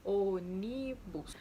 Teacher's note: antepenúltima sílaba é forte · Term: palavra proparoxítona